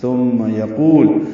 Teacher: واو مدہ ہے، دو حرکات لمبا ہے